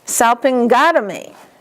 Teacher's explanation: So tomy is not going to have an accent.